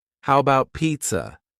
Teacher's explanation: The first A in the word about is gone. It's just missing. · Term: reduction